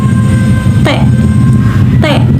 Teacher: lidah menempel pada gigi belakang bagian atas sehingga udara tidak secara langsung bisa keluar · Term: fonem konsonan